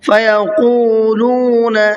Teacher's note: قاف کو بھی کھینچنا ہے اور لام کو بھی کھینچنا ہے، اور ساتھ میں قاف کو منہ بھر کے پڑھنا ہے